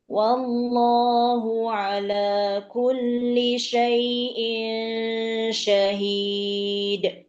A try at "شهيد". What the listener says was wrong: Dikurangin tekanan pada pada qalqalah. Syahid. Kalau ibu neken boleh, tapi jangan terlalu kuat nanti kesannya hamzah. Syahid. Ini hamzah. Hid. terlalu kuat. Syahid. Cukup syahid. neken, seperti Bu Lydia baca nggak neken, syahid. Nah, itu nggak neken syahid, nggak neken. Kalau neken syahid boleh. Yang nggak boleh syahid. Ini jadi ada hamzah sukun. Ya, nggak boleh terlalu kuat.